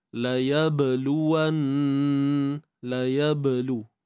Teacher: ba yang sukun di sini terdapat sifat qalqalah sughra